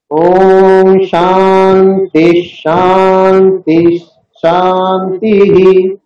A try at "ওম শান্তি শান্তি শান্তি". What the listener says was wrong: হ্যাঁ, শান্তি, ওই তিস বলে একটা গ্যাপ তৈরি হয়ে যাচ্ছে, ওইটা হলে দীর্ঘইকার মতন উচ্চারণ হয়ে যায়। শান্তি, ওই টি ইকারটাকে আমরা বেশিক্ষণ টানবো না।